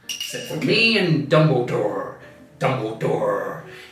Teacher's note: West country accent has a strong emphasis on R · listen to the r sounds he really drags them out